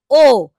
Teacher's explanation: উচ্চ মধ্য, পশ্চাৎ, অর্ধ সংবৃত স্বরধ্বনি